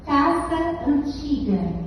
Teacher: Eu juntei o sa de casa com o a de antiga. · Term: crase